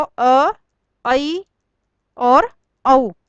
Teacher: इनके बोलने में आ जितना मुंह नहीं खुलता है बल्कि उनसे आधा खुलता है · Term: अर्ध विवर्त